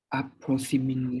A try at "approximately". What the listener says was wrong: Okay, you have to say the T sound.